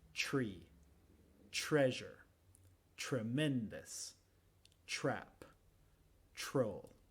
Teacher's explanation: en inglés la TR muchas veces es el sonido CH